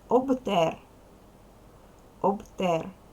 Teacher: перший склад об вимовляй чітко дзвінко